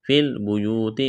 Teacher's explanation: فی البیوت، واو ساکن سے پہلے پیش، واو مدہ ہے، الف کے برابر کھینچنا ہے